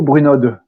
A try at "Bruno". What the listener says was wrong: Alors, c'est un nom des Alpes, c'est Bruno. On ne prononce pas la finale, mais j'ai l'habitude, c'est pas grave, c'est comme vous voulez.